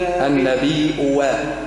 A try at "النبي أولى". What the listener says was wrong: أريتها الهمزة الثانية بدلها واو النبي أوى